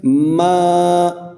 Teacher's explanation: میم کے اوپر کھڑی زبر ہے، اس لیے ہم میم کو ایک الف کی مقدار کھینچ کر پڑھیں گے۔